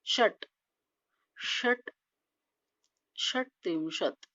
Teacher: षट अर्धव्यंजन टचा अर्धव्यंजन उच्चार आला पाहिजे